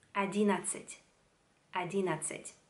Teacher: En esta palabra se escriben dos N, pero solo escribiendo se nota la diferencia. Cuando lo pronunciáis, se pronuncia como una N. Одиннадцать.